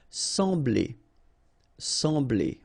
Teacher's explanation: So EM will give you the sound en, okay? So you don't pronounce the M, you just get the sound en.